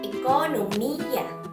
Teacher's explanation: so nasa I ang ating diin